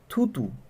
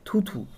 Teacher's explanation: অল্প প্রাণ ধ্বনি যখন মহাপ্রাণ ধ্বনি হয়ে উচ্চারিত হবে তখন সেটা হবে কিন্তু পিনায়ন। তাহলে মনে রাখতে হবে অল্প, যখন অল্প থেকে বেশি সেটা হয়ে যাবে কি পিনায়ন।